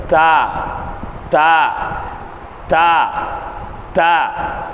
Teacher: நுனி நாக்கு மேல் முரசில் பாடுற மாதிரி உச்சரிக்கணும்.